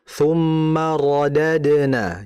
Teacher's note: Kemudian berikutnya ra. Ra-nya harus ditebalkan.